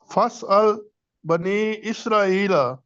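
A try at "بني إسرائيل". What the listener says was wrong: اسرائیل لمبا کرے نا.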